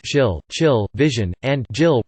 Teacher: consonants articulated with the tongue near or touching the back of the alveolar ridge, farther back in the mouth than the alveolar consonants, which are at the ridge itself but not as far back as the hard palate, the place of articulation for palatal consonants. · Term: postalveolar consonants